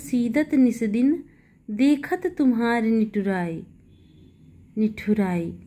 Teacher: यहां पर तो इन सभी वर्णों में एक ही उच्चारण स्थान यानी दंत्य है।